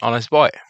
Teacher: Article N is used before words that begin with a vowel sound, and honest begins with a silent H, making the initial sound a vowel sound. So the corrected sentence would read, Kshitiz is an honest boy.